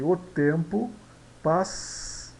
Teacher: Aqui em passou nós temos o O e o U, né? Então aqui o U é uma semivogal, então o O é uma vogal. Nessa sílaba nós temos um ditongo.